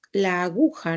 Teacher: Acá lo correcto es la aguja, ¿no? Porque la sílaba tónica está en la penúltima sílaba